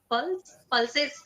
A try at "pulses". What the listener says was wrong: It is pulse, but previously how you pronounced it sounded a lot like pearl that you wear around your neck.